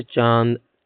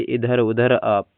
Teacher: जब हवा नाक और मुंह दोनों निकले जैसे चांद, तो अनुनासिक होता है। निरनुनासिक, जब हवा केवल मुंह से निकले जैसे इधर उधर आप।